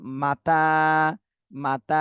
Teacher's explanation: তাতে এক আলিফ টান দিতে হবে খাড়া জবর